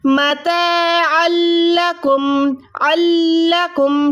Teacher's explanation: تو یہاں پر دیکھیں دو زبر کے بعد لام ہے، تو ہم اس کو عین کو ڈائریکٹ لام سے ملائیں گے، آواز کو منہ سے ادا کریں گے نہ کہ ناک سے